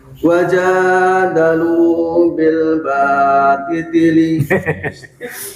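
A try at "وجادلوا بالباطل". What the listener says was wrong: Bukan dititili, nggak usah dititili. Kalau saya dititili.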